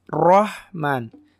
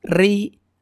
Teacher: ro ketika berharakat fathah dibaca tebal, ketika berharakat kasrah dibaca tipis.